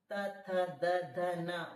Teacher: त वर्ग बोलोगी दंत्य, ऋतु लसानाम दंत्या, त थ द ध न बोल के देखो पूरे दांत में लग रहे